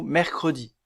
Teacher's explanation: doit obligatoirement être prononcée comme dans le mot mercredi prononcer mercredi il serait impossible de ne pas prononcer le E caduc dans ce mot